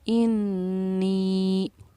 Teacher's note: 2.5 अलिफ के मक़दार के बराबर हम इस नून या ज़िरनी को खींचेंगे, इसीलिए हमने इसको खींच कर पढ़ा इन्नी। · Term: मद मुनफ़स्सिल